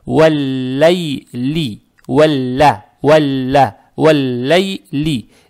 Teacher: Так как буква лам, она тоже солнечная буква. Получается, лам здесь удваивается, фатха приобретает оттенок я, то есть читаем мягко.